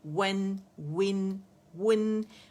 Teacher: اس میں واو کے لیے ہونٹ ہمارے دانتوں سے نہیں لگیں گے